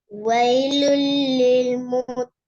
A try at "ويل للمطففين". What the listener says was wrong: பிழை ஃபீன் நீட்டுறது குறைஞ்சிட்டு திருப்பி பிழை இப்போ குறைஞ்சிட்டு முத்தஃபிஃபீன் திருப்பி குறைஞ்சிட்டு திருப்பி ஸ்டார்ட் வரணும் வைலுல்லில் அந்த லாம்ல உச்சரிக்கணுமா லாம் பேத்திருப்ப வைலுல்லில் முத்தஃபிஃபீன் நான் 50 முறை ஓதி தந்துக்கிறேன் நீங்க 60 முறை ஓதிக்கிறீங்க 60ல பெரும்பாலும் 55 முறை பிழையா ஓதிக்கிறீங்க 5 தான் சரியா வந்தீங்க சரி 4வது வாங்க பாப்போம்